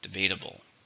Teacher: 4, stresses on the second syllable.